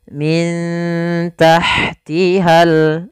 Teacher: Kami kurang menambahkan, yaitu adanya nun sukun bertemu dengan huruf ta sebagaimana tadi kasratain bertemu huruf ta. Maka cara membacanya disamarkan kepada huruf ta-nya. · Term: ikhfa